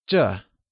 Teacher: This translates to 这 and is pronounced using the falling tone.